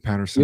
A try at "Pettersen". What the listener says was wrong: A is silent. There's no A. There's no A.